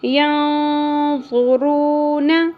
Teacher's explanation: نون ساکن کے بعد حروف اخفا میں سے ضو آ گیا تو یہاں پر اخفا مع الغنہ ہوگا اور ضو اور را کو ہم نے پر پڑھنا ہے.